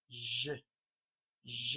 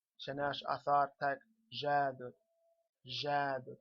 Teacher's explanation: It's a sort of buzzing sound, a soft J sound. It's a zh. So this DJ is pronounced zh, zh.